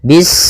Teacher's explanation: Bismillahirrahmanirrahim pada bacaan bis ini sempurnakan huruf sinnya ketika sinnya sukun ini ada sifat safir dia harus kita alirkan nafasnya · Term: sifat shafir